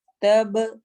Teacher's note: تب با پہ کلکلا ہوگا